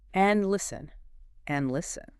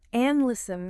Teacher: Notice how the D in the word and is very, very soft. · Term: D almost disappears